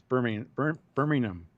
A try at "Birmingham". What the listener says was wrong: Yeah, but don't emphasize the H. Birmingham. it's a nice gentle word. It's not Birmingham.